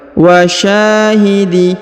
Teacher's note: Perhatikan huruf sya dipanjangkan 2 harokat karena di depannya terdapat alif.